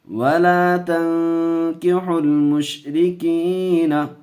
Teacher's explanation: گنہ کر کے پڑھیں گے، اخفا کا قاعدہ